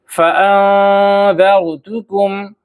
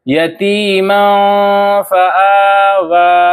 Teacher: اخفا کرنا ہے، یعنی ناک میں نون کی آواز کو چھپا کر پڑھنا ہے